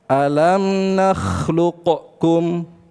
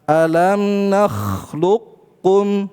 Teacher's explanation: langsung qafnya dimasukkan ke huruf kaf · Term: Idgham